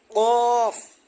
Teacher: জিহ্বার গোড়া তার বরাবর উপরে তালুর সঙ্গে লাগাইয়া উচ্চারিত হয়